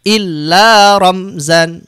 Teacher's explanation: Tidak boleh rom ditahan, tidak boleh mendengung, tidak boleh samar, tapi harus jelas di bibir.